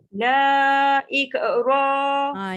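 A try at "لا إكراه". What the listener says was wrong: Jaga kaf, jangan ik.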